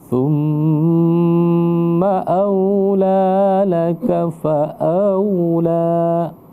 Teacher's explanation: tempat keluar hurufnya itu adalah ujung lidah bersentuhan dengan ujung gigi atas